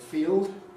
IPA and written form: fiːod (field)